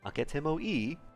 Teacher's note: This is a question that simply asks for a yes or no. These types of questions hardly ever have the question particle ka at the end. The rising intonation alone marks them as questions.